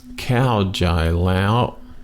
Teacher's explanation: cow is falling tone Jai flat tone and then Lao High tone